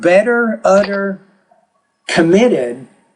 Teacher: it's almost like a soft D instead of the T